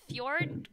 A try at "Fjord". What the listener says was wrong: Ford. It's written Fjord, but he pronounces it Ford.